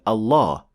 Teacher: be pronounced slightly differently from all other words in Arabic specifically it will be a full mouth lamb or as we call it in English the dark l